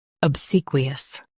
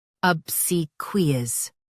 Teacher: US starts with ab. UK starts with ub.